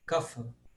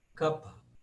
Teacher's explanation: Agora, hoje, na Índia, se fala esse pH como F. Então, ele virou kapha.